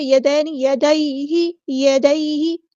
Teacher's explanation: یدین یدیہ، یدیہ، ہاں سمپل ادا کریں گے، اور ہاں کی زیر کسرہ کو لمبا نہیں کریں گے، ہم حرکات کو لمبا نہیں کرتے